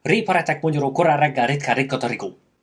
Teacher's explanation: you have to roll the R at least 3 or 4 times, like for like half a second. So you can't, even if you even if you pronounce it very quickly, you have to take your time to roll the R.